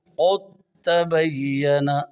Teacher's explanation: دال اور تا کا مخرج ایک ہے، لہذا دال تا میں داخل ہو جائے گی اور دونوں ایک ساتھ مشدد ادا ہوں گے، نام بن جائے گا ادغام متجانسین تام۔